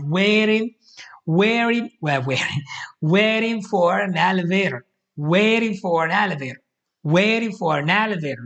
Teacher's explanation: the reason why you guys probably couldn't understand it is because he's using this flat T · the stress of the word it goes in the beginning of the word, and then it fades away as the word ends